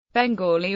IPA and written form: bɛŋˈɡɔːli (Bengali)